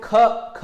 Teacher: इसमें का से अपेक्षाकृत ज्यादा हमारी हवा निकल रही है, मतलब ज्यादा प्राण निकल रहा है। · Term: महाप्राण